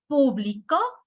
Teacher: si le pongo el acento en la última, en la O, en la última sílaba, estoy cambiando totalmente el sentido de la oración